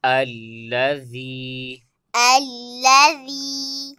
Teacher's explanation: سب سے پہلے دیکھیں یہاں پر اس کا جوڑ اس طریقے سے ہوگا، حمزہ لام زبر ال، حمزہ لام زبر ال، اس کے بعد آگے یا مدہ ہے، لہذا سے ایک الف کی مقدار کھینچ کے پڑھیں گے۔ ذال یا زیر ذی، ذال یا زر ذی، الذی، الذی، آگے حرکت ہے، اسے کھینچ کے نہیں پڑھیں گے۔